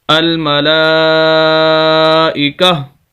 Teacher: وقف کریں گے تو یہ تا کو ہم ہا کے اندر بدل دیں گے، یہ گول تا اس کو بولا جاتا ہے۔